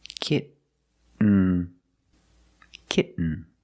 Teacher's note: When you make the stop T, the tongue is up, almost in the N position, so you don't have to change much.